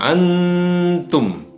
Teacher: nun sukunnya harus disamarkan, ditahan dan mendengung.